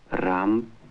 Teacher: although there is an R sound in Russian, it is different from the American R. The speaker says, Ramp. for ramp, trilling his R.